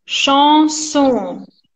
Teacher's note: be careful with the nasal, the A nasal